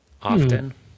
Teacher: You're not supposed to pronounce the T in often. >> Often. >> Yeah, the T is supposed to be non-existent in the pronunciation >> supposedly.